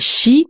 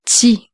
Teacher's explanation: Et ensuite, l'avant-dernière lettre, le son tsi, j'ai marqué CHI, mais en fait, il faut pas le lire comme un français chi, mais tsi, comme s'il y avait un T devant.